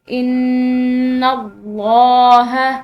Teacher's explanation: لفظ اللہ کی لام اس نون کے زبر کی وجہ سے موٹی پڑھیں گے